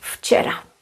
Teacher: So it goes back, it's regressive. And because ch is voiceless, v will become voiceless. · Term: regressive assimilation of voice